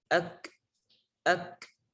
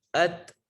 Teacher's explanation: Yaitu keluarnya nafas ketika dia sukun. Maka ketika kita membaca ak, harus ada hamsnya, harus ada sifat atau nafas yang keluar. Ak, ak. Tentunya tanpa berlebihan.